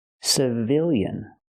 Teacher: now the stress changes the stress is on the second syllable so we use the short I sound